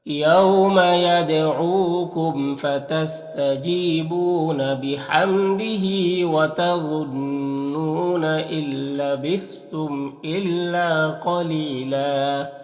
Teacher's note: یہاں پر دو زبر ہے، وقف کریں گے تو ایک زبر کے ساتھ الف پڑھا جائے گا